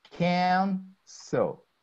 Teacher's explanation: If the verb has two or more syllables, okay, but the first syllable is distressed, not the second, there is no need to double, like cancel. The first syllable is stressed, can.